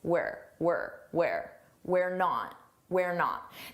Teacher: This is a contraction. We are. And notice how unstressed it is.